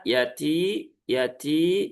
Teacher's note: Ada hembusan udara yang ikut keluar saat diucapkan. T-nya dua harokat, yati, yati, cukup diayun saja, ti, yati.